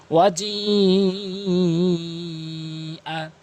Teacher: এটি হচ্ছে মুত্তাসিল, আর ৪ আলিফ করে এখানে টেনে পড়তে হবে